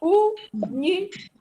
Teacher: E a sílaba tônica é a antepenúltima. Então, também é uma proparoxítona.